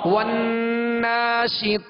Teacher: والناشطات والناشطات، تو کے اوپر کھڑا زبر ہے، آواز اور منہ کھولیں گے، طاتی والناشطات، ہونٹوں کو گول کر کے اسے پر نہیں کریں گے بلکہ جڑ زبان اوپر اٹھائیں گے تو خود بخود یہ حرف پر ہوگا